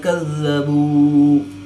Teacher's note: واو ساکن سے پہلے با پر پیش ہے تو وہ مدہ اس کو ایک الف یعنی دو حرکات کے برابر کھینچ کر پڑھیں گے